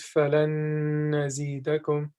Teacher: So what the Imam is basically telling us is that whenever we see a word that has a noon in it or tanween, and then right after it, any of these 4 letters show up, we not only do idgham and merge the 2 letters and put the first letter into the second letter, but at the same time, we're going to extend it and nasalize it. · we combine 2 letters but at the same time extend the sound and nasalize it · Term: idgham with ghunna